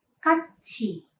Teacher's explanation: konsonan diget berubah menjadi ciet dan konsonan pieep berubah menjadi ciet.